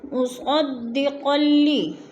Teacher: مصدقا لی، قاف 2 زبر قل لام ذیلی، ادھر ادغام ہو رہا ہے، قاف کو لام کے ساتھ ملا کر ادغام کرنا ہے